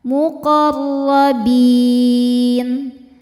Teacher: Ro-nya dibaca tafkhim karena berharokat fathah, maka ro-nya tebal.